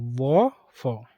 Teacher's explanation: दंतोष्ठ निचले होंठों और ऊपर के दांतों से